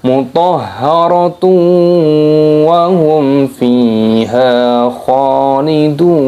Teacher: Hum fiha ada mim sukun yang bertemu dengan huruf fa, ini hukumnya dibaca idhar syafawi, dibaca jelas.